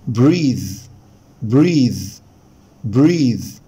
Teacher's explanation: طبعا الناس بتنطق كلمة يتنفس بريث حبايبي، بريث ده النفس، اما كلمة يتنفس فهي بريث بريث بريث. طبعا التي اتش ساوند هنا ذا مش ثا